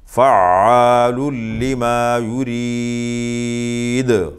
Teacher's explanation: قلقلہ کریں گے آخر میں، دال ساکن، اس سے پہلے متحرک حرف ہے را، تو قلقلہ کریں گے